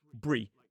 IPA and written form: briː (-bury)